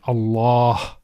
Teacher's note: The lam with the shadda is pronounced with tafkhim, with heaviness.